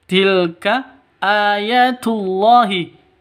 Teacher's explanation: Tilka ayatullahi tilka tilka ayatullahi a tilka ini pendek semuanya ayatullahi a panjang dua ketukan karena ada tanda berdiri di atasnya mad asli atau mad thobi'i